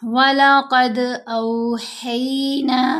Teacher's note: یہاں ہم نے قاف کو بھی موٹا پڑھنا ہے، اور دال سے جب ملانا ہے تو دال کے اوپر قلقلہ کرنا ہے، دال کی آواز کو ہلانا ہے۔ قلقلہ ہوتا ہے آواز میں جنبش یا ارتعاش کا پیدا ہونا، قلقلہ کہلاتا ہے۔